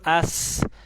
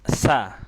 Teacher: Lebih banyak alirannya ketika sukun daripada berharokat. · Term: kaidah hamas